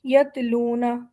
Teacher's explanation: یہاں پر تا کی آواز باریک ہے جیسے ہم اردو میں پڑھتے ہیں ویسے ہی ہے، یتلون.